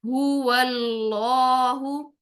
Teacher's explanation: अल्लाह देखिए इसमें जलाला का यहां पर रूल आ गया कि अल्लाह के नाम से पहले जब जबर आएगी तो अल्लाह के लाम को इसमें जलाला के लाम को हम मोटा पढ़ेंगे · तो अब यहाँ पर हम मोटा पढ़ेंगे हुवल्लाहु, हु, सबसे पहले ये वाला जो हा है, 2 चश्मी हा इसको बोलते हैं, ठीक है? इस हा की पेश को पूरे गोल होंठों से अदा करेंगी